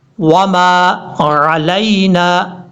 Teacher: عین کو کلیئر کرنا ہے، حمزہ کی آواز نہیں آنی چاہیے. لام کو یا سے کنیکٹ کرنا ہے، یہ یا بھی لین ہے، مدہ نہیں ہے، اس کو لمبا نہیں کریں گے.